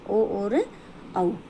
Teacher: कंठोष्ठ, गले और होठ दोनों से मिलकर जो बोले जाते हैं